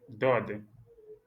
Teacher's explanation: Il y a la langue qui touche un peu le palais et ça revient de manière emphatique. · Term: lettre emphatique